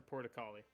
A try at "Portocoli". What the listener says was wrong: Porto Collie, not Porta Collie.